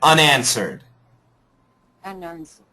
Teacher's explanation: The un gets the accent.